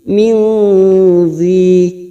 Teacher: Ada kasrah tanwin bertemu zal, namanya bacaan ikhfa hakiki. Kita samarkan bunyi kasrah tanwin. Min zi. Zi ada kasrah bertemu ya sukun mad tabi'i 2 harokat.